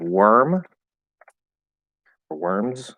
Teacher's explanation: even if it's stressed it's still going to be pronounced er not or